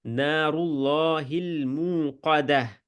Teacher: را موٹا لام موٹا قاف موٹا ہے. نار اللہ المو تھوڑا لمبا کر دیا ہے 2 گنا موقدہ.